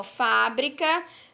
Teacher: na sílaba fa nós temos o acento agudo e pronunciamos pronunciamos com mais intensidade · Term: sílaba tônica